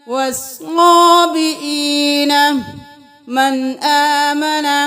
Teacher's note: یہاں پہ نون ساکن ہے لیکن آگے حمزہ آ گیا ہے تو یہاں پہ غنہ نہ کریں.